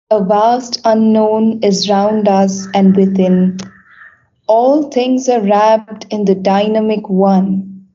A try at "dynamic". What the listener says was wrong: I think it's dynamic, not dynamic. Dynamic. Dynamic. Second syllable. Dynamic.